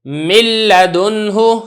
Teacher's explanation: اب یہ جو لام ہے اور را جیسا کہ آپ کو معلوم ہے کہ اس کے اندر ادغام میں تام ادا ہوتا ہے تو صفت غنہ بالکل بھی ادا نہیں کی جائے گی